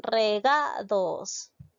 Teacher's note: lleva la mayor fuerza de voz en la sílaba ga es decir en la penúltima es una palabra grave no la tildó porque está terminando en